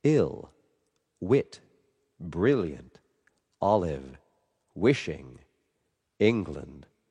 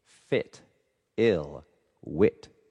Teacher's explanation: It's always a short sound. It's really front though. You wouldn't say e and then I which is toward the middle of the mouth.